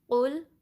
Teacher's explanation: قل قوف کو لام سے ملانا ہے، قوف پہ پیش ہے نا، تو اس کے لیے ہونٹوں کو صحیح سے گول کرنا ہے، قوف کو ہیوی بھی پڑھنا ہے، ٹھیک ہے۔ زبان کی جو جڑ ہے اوپر کے نرم تالو سے جب لگے گی تو قوف ادا ہوگا